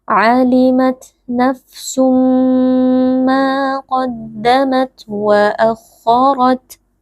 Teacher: Ayat kelima, alimat nafsum ma qaddamat wa akharat. Alimat huruf ta sukun, kita keluarkan sedikit nafas.